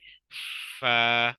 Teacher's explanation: सबसे पहले ऊपर के दांतों के किनारे और निचले होठों के तर हिस्से से अदा होता है फा ऊपर के दातो की जो नोक है इनको आप नीचे